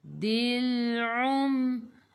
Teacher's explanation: A'i'u daripada kerongkong, bukan daripada hidung.